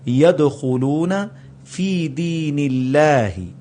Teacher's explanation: نون کے نیچے زیر آئی تو اللہ کو پتلا کر کے پڑھا جائے گا · تو دال پر قلقلہ ہوگا اور یہ مڈل میں آ رہا ہے